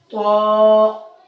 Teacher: اس طا کو بھی ہم تھوڑا سا موٹا کر کے پڑھیں گے اور پر کر کے پڑھیں گے